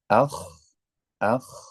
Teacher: Nah, selain makhrajnya itu di pangkal tenggorokan, nah ketika menyebutkan huruf kha itu posisi lidah bagian pangkal akan juga terangkat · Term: huruf isti'la